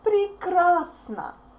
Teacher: Unstressed O represents A sound.